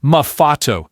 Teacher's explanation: In Italian, you don't say the letter twice. Instead, you just hold it. You stretch out the sound for an extra little beat. It gives the word a kind of rhythm, a little bit of weight. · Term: double consonants